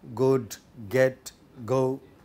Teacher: where is the place of obstruction back of the tongue or velum therefore velar